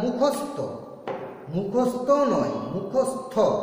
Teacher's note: উচ্চারণ ত কিন্তু নয়, উচ্চারণ হবে থ